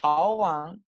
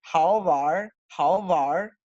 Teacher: No voy a añadir la E, pero además la regla fonética con esto me dice que la N desaparece fonéticamente. Entonces, sin la retroflexión vocálica es how van, y ahora con la retroflexión vocálica es how var.